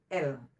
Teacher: kita memakai sebelah saja kanan atau kiri tidak masalah yang kelima kepala lidah dengan langit-langit keras keluar daripadanya lam